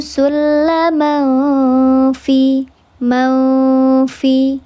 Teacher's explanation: Ada tanwin menghadapi huruf fa dibacanya disamarkan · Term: ikhfa hakiki